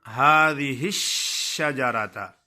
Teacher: شین کی ادائیگی میں آواز منہ میں پھیل جاتی ہے